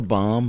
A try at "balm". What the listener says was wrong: say balm. If it's there, you gotta say the L. It's not silent. It's not a silent L.